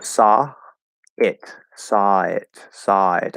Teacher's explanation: I just go from a to I and there's no break between them we just keep the sound going it doesn't sound like there's anything moving over or blending you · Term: flow into each other